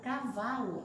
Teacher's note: Na palavra cavalo, a sílaba tônica é o vá